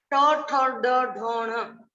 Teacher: इनको बोलते समय हमारी जीभ है वो उल्टी होकर तालू से टकराती है, इसको बोलते हैं मूर्धा, मूर्धन्य ध्वनि।